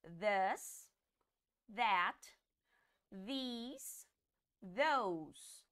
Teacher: a gente vai colocar a ponta da língua no dente para sair o som soprado